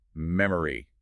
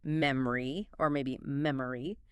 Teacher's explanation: Because the natural stress-timed way to say it is memory, or maybe memory, we hit the first syllable incredibly hard, mem, and that middle O just collapses into a schwa or disappears completely